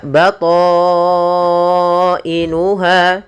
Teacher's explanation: Panjangnya adalah 4 harakat. Maka kita memanjangkan to-nya 4 harakat atau dia 5 harakat. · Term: mad wajib muttasil